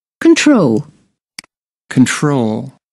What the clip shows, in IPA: kənˈtrəʊl